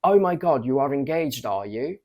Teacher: double positives with a rising intonation exist and they used to convey extra surprise excitement and interest regarding